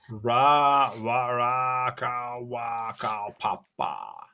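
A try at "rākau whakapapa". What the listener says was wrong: You're not saying it right. You got to say it fast. Rakawapapapa.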